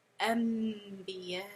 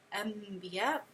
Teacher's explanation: you're turning that noon sakin into the sound of a meme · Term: iqlab